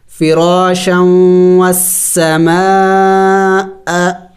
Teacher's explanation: دیکھیں یہ شکل مد کی شکل ہے، اسے مد کہتے ہیں اور مد کو 5 الف کے مقدار کھینچنا ہوتا ہے، لمبا کرنا ہوتا ہے